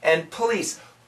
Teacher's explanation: when we say this word quickly, no, the N kills the D.